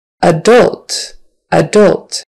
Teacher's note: accent is on the second syllable that first a is an uh we say more of an uh adult um not adult most